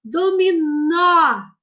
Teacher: O acento agudo, crianças, indica uma pronúncia aberta da palavra.